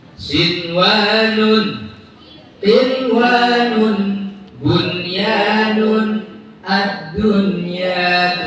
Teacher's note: Nun sukun, bertemu ya wawu dalam satu kata, jelas bacanya. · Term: idhar mutlak